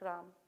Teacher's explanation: There should be an A, like if we're pronouncing it correctly. But Gujaratis are more like Ram, you see? Ram, so it's missing that A